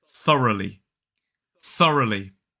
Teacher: three syllables the stress is on the first syllable so that first syllable is f the unvoiced th sound then